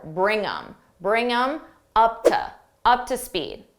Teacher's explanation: I can reduce the them just get rid of that th and I'm left with M and I have to add it to the word before